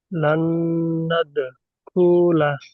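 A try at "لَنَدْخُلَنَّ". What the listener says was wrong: খুতে টান নেই, লান্নাদ খুলা।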